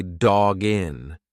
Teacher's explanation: when you've got that hard consonant followed by a vowel just push the two together like it's one word